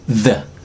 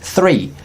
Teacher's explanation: Bagaimanapun kita bacanya the, agak tebal, the. Lalu kemudian kita baca kata three, itu agak lebih ringan, three.